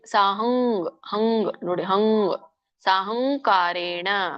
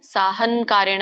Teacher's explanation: ಹ ಮುಂದೆ ಅನುಸ್ವಾರ ಏನಿದೆಯಲ್ಲ ಅದರ ಮುಂದುಗಡೆ ಏನು ಪದ ಇದೆ ಕ ಇದೆ ಕಗ ಅನ್ನುವಂತ ಅನುನಾಸಿಕ ಬರಬೇಕಲ್ಲಿ